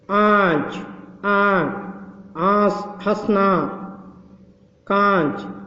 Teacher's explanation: ముక్కుతో పలకాలి కొంచెం లైట్ గా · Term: అనునాసిక